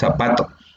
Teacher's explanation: Z la pronunciamos como S y decimos zapato y no zapato.